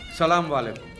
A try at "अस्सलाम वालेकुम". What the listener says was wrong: बड़े बड़े लोग यहीं पे गलती कर देते हैं। सलाम वालेकुम नहीं अस्सलाम वालेकुम।